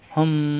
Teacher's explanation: মিম সাকিনের পরে বা আসছে এজন্য এই মিমকে গুন্না করতে হবে একটু ধরে রাখলাম এটাকে গুন্না বলা হয় আশা করি ক্লিয়ার মিম সাকিনের বাম পাশে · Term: গোপন গুন্না